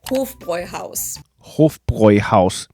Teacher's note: In German, the word Hof is pronounced with a long O, and then Bräu is pronounced like this, and you don't need to...